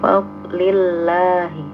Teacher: karena harokat sebelumnya adalah kasroh jadi tipis. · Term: tarkik atau tipis